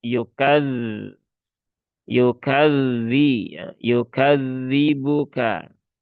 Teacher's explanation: Padahal di situ dua-duanya huruf dalal dan dzal pun juga punya sifat rakhah. Maka ya tunaikan rakhawahnya ketika dia bertasydid